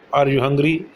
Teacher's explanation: To ask such general questions, the appropriate rising intonation should be used at the end of the sentence